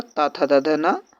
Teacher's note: दंत व्यंजन, इसमें ता वर्ग आता है पूरा